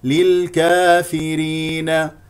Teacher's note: لل لل للكا افتح الفم في الالف فيرين اكسر الفاء اوراء والراء مرققه لانها مكسوره